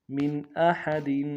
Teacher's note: میم کو نون ساکن کے ساتھ ملانا ہے، نون ساکن میں یہاں پہ اظہار ہوگا. احد میں ہا کو گہرائی سے ادا کریں گے، دال کے نیچے تنوین ہے، یہاں پہ بھی اظہار کریں گے.